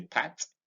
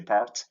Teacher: if you say pat, there's no R vibration in pat. But if you say part, there's an R vibration